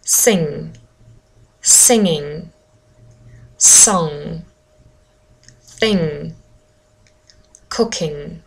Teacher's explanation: I move my tongue back as if I want to say G and then I do not say G